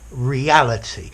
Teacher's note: So R-E space orally, reality. So it's like a very small pause between two syllables, but between two vowels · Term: hiatus